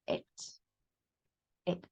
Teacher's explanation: esta I corta es como una I que quiere ser E.